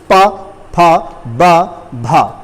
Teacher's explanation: इस पूरे वर्ग को बोलने के लिए आपके ओठ एक जैसा रिएक्ट करेंगे, यानी कि हर बार ओठ आपके बंद हो जाएंगे, पूरा मुंह बंद होगा। जैसे पा, तो पा यानी कि आप मुंह बंद करके ही खोलेंगे तभी आपकी आवाज आएगी। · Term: प वर्ग